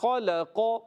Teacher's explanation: خلق میں خا موٹا رکھنا ہے قاف موٹا رکھنا ہے مگر لام باریک رکھیں گے